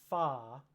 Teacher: the hole made by my lips is made smaller and also kind of centralizes a bit